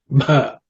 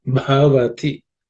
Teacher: The bha is the fourth letter in the pa varga, so it has to be aspirated.